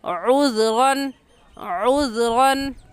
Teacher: عین حلق کے درمیانی حصے سے نکال کر پڑھیں گے. عذراً عذراً غن کی تنوین پر ہم غنہ نہیں کریں گے کیونکہ تنوین کے بعد حروف حلقی میں سے حمزہ آ گیا ہے.